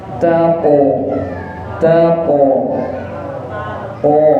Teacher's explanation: karena qaf niki huruf tebal, maka lidahnya, pangkal lidahnya diangkat.